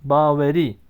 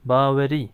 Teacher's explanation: Bakın A uzun, E kısa, İ uzun. Baveri. E harfimiz kısa bir ünlüdür.